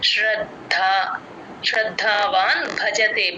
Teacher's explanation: ద కింద ద వత్తు మహాప్రాణం రెండు వినపడాలి